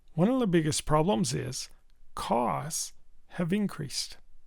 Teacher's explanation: increase is used as a verb, there's more stress on the second syllable. So, as you can see, I used only.3 seconds for the first syllable and I used.7 seconds for the second syllable.